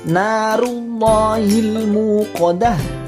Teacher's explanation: Al-muqadah itu alnya dibaca jelas atau idhar qamariyah.